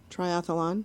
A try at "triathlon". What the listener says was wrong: Yeah, it's triathlon. There's no extra A. It's not triathlon. It's triathlon.